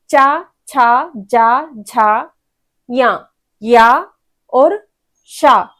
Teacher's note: देखिए बोल के क्या है, ई बड़ा ई, फिर चा वर्ग में चा छा जा झा या और शा। तो आपका टंग आपके पैलेट से टच होता है, इसीलिए इसको बोलते हैं तालु से उच्चारण स्थान। बिना टंग को पैलेट से टच किए आप इनको नहीं बोल पाएंगे।